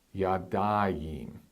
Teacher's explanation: You see that patak and the yod make a diphthong